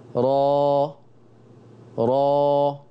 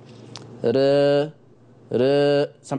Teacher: التقليل للفتحة أقرب، بس الفتحة مش كاملة